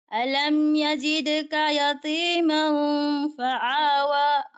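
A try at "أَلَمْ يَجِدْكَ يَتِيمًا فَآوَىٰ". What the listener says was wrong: Okay, pero bumalik ka naman dito sa ain, ginawa mo namang ain dito. dito sa ain. Nakabuhilo ka kasi sa ain, puro lahat ay ain na lang. Ito ay hamza.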